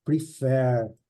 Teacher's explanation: Nesse caso, a sílaba forte é a última, né?